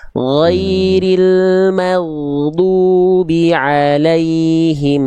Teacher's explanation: Oke, tinggal huruf dot jangan di o-kan, jangan dimonyongkan. Bunyi keluar o-nya itu karena mengangkat bagian pangkal lidah. Ghairil maghdubi alaihim jangan jangan dibulatkan. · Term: huruf tebal